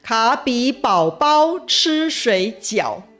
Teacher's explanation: 前面3个字卡比宝跟最后2个字水饺全部都是3声 。答题的时候，这些字都应该要回答3声，不能受到连续3声发音变调的影响。那陷阱在哪里呢？卡比宝宝的第2个宝是这一题最大的陷阱，因为母语者通常会把它发成3声和1声的宝宝，而不是字典里3声和轻声的宝宝。所以如果你是按照母语者的实际发音来作答，很容易就会被误导了。其实啊，在